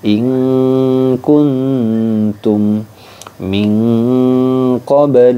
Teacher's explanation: Ikfa ab'ad yang paling jauh itu bunyi Nun sukunnya udah sangat samar gu malah cenderung bunyinya ke Eng ya bunyinya ke Eng jadi